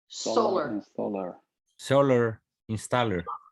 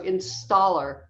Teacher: we want to say this second syllable a little longer and um a little bit louder